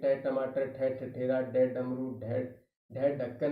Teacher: अगर ये हमारे को पता है कि ये मूर्धन्य है यानी कोमल तालु से थोड़ा सा नीचे कठोर तालु को जब हमारी जीभ है वो स्पर्श करती है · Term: मूर्धन्य व्यंजन